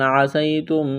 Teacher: قاف الف زبر قا، الف سے پہلے زبر ہے، ایک الف کے برابر کھینچنا ہے. یا ساکن سے پہلے زبر ہے، حروف لین یا ہے، اس کو کھینچنا نہیں ہے. جلدی پڑھیں گے نرمی کے ساتھ